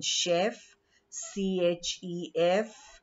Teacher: the sound of ch in such words is the sh sound. Like we have in chef, chef.